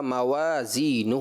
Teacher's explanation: واؤ جو تھا حرف شفویہ ہے، اس میں آپ نے ہونٹوں کی گولائی سے پڑھنا تھا